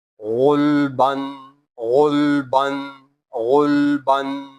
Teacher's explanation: While reading ghain, the sound comes from upper part of the throat.